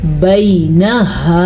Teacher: یہ لمبا نہیں کیا جائے گا کیونکہ یہ یا لین ہے